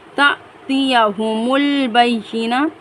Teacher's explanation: تأتیہم البینہ، الف پر جزم ہے، الف کو الف نہیں بلکہ ہم حمزہ کی مانند پڑھیں گے، تا جھٹکا لگا کر۔